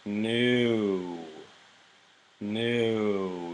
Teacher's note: in English, we even diphthong our U sound, so we say new, new.